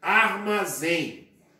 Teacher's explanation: tônica zen última sílaba e é no caso eu tenho aí uma palavra oxítona porque a sílaba tônica é a última